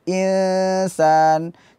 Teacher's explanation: jadi dominan suara ke hidung akan tapi ada suara dari mulut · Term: ikhfa